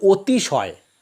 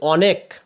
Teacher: কিন্তু যখন উচ্চারণ করি তখন উচ্চারণ করি অতিশয়, অর্থাৎ অয়ের পরিবর্তে ও উচ্চারণ করি। বর্ণ হিসেবে আছে অ, কিন্তু ধ্বনি হিসেবে তার পরিবর্তে আসছে ও